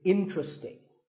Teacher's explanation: there are only 3 syllables, in-tra-sting, and the stress is on in, so the word is interesting.